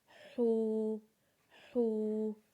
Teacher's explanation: ہا کو جب واو کے ساتھ ملائیں گے تو اسے ایک الف کے برابر کھینچیں گے، اور ہا کی آواز کو اپنے حلق سے نکالیں گے، جیسے حو، حو۔